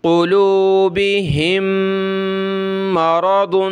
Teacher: ایک ہی میم کی آواز آئی، بس دو نہیں پڑھنی، مدغم ہو گئی، ایک بن گئی · میم کے اوپر یہ تشدید ہے تو ہم نے ناک میں آواز پیدا کرنی ہے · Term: ادغام